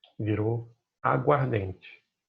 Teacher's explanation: A gente perdeu aqui o som de um A, que era água ardente. Virou aguardente. Um som só. E perdeu também a sílaba tônica do A, tá?